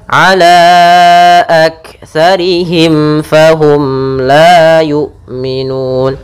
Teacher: suara mimnya harus jelas, jangan ditahan gunnahnya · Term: izhar syafawi